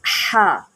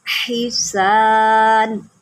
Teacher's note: یہ ہا جو ہوتا ہے نا حلق کے درمیان سے نکالا جاتا ہے اور اس کا اپنا ایک ساؤنڈ ہوتا ہے جیسا کہ ہا.